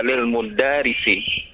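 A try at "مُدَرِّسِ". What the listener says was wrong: Mudarisi atau mudarrisi? Ada tasdid di atas ra'nya.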